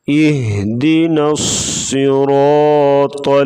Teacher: صاد اور را اور طا تینوں کو موٹا کر کے پڑھا جائے گا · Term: موٹے حروف